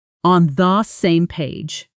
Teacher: The phrase on the same page often connects into something closer to on the same page with the almost disappearing into a quick unstressed sound.